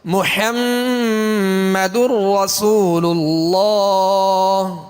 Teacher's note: اللہ عز و جل کے لام کو پر یعنی موٹا پڑھیں گے